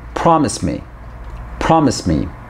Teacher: we don't stop in the middle we say them like they are one word